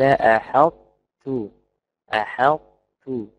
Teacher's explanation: بإدغام ناقص، مبدأ بطاء وانتهي التاء